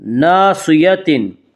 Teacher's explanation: صاد کو پر پڑھیں گے، صاد حروف مستعلیہ میں سے ہے، حروف مستعلیہ 7 ہیں جن کا مجموعہ خصہ ضغط قز ہے، جو ہمیشہ ہر حال میں پر پڑے جاتے ہیں۔